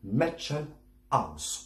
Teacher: pas de liaison, Mädchenhaus. C'est pas joli. En allemand, on réattaque. C'est un tout petit peu guttural.